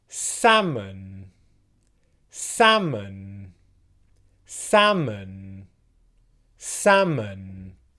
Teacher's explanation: when you're actually using this word you'd pronounce the first syllable with much more stress